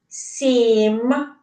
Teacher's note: звук м - це твердий приголосний звук